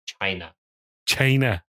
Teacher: he's so breathy on the ch, isn't it?